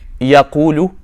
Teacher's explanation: that ya is not a letter of med. It's pronounced from the middle part of the tongue.